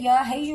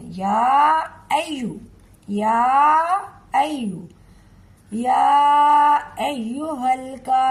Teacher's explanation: जब आगे या पर तशदीद आ गई है तो इस हरकत को हम आगे वाली या से मिलाएंगे, अय्यू, या अय्यू। हा की आवाज बीच में से नहीं निकलनी चाहिए। अक्सर लोग गलती में जाने अनजाने में या हय्यू बोल देते हैं, या अय्यू, या अय्यू, या अय्युहल काफिरून।